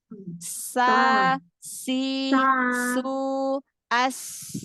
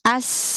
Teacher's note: kalau sofir pada huruf sin dia seperti desisan, Ular, desisan.